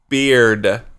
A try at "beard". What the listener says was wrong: it sounds like you're saying period